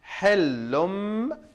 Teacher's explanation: So since after tanween al dhamma we have ba, we change this noon sound to mim sound. Hillum. So ba kasra bi, ha alif fatha ha, dhal lam fatha dhal, ba fatha ba, lam fatha la, dal kasra di.